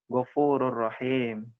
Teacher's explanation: idgam artinya masuk Bilaghunnah artinya tanpa dengung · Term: idgham bilagunnah